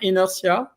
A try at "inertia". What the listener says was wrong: Inertia, yes, it's the same. The pronunciation is just slightly different. Inertia, like it's SH, inertia. Inertia.